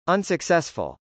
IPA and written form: ˌənsəksˈɛsfəl (unsuccessful)